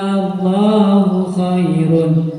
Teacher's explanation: Hamzahnya dipanjangkan 6 harokat. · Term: mat farqo